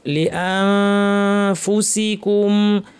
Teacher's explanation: লিআনফুসিকুম, ইখফা, নুন সাকিন ফা, দাঁতকে ঠোঁটের উপরে ফা বলার জন্য মুখ রেডি, নাক থেকে গুন্না। লিআনফু বলার সময় প্রচুর আওয়াজ, বাতাস, ফ্যাসফ্যাসে আওয়াজ।